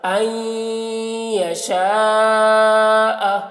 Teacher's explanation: نون یا کے ساتھ مدغم ہو رہا ہے لیکن ناقص طور پر غنہ کے ساتھ. این یا زبر یا، این یا، شین الف مد زبر شا، این یشا، حمزہ زبر ا، این یشاء. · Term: ادغام